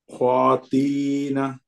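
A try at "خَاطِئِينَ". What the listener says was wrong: ক্ষতি, এই যে একটা হামজার একটা কাসরা আছে, তাহলে কি হবে? ক্ষতি ই না।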